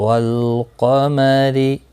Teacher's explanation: را زیر کی وجہ سے باریک ہوگا